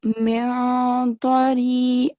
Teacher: So the sound of noon is not going to be obvious. You have to do ikhfa.